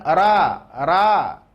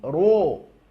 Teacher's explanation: Sedikit ro tebal tadi, ya, huruf tebal bunyi vokalnya adalah huruf o